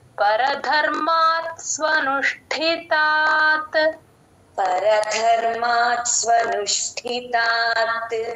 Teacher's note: ష కి ఒత్తు ఠ గమనించండి కొంచెం నొక్కి చెప్పాలి